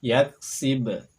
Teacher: ada suara pantulan pada huruf ba Sakinah